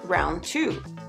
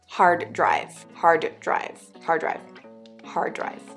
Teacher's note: For instance, we know that the word round is pronounced round, and the word two is pronounced two. However, when the words are used together as in round two, we often drop the final d so that phonetically it reads round two. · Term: elision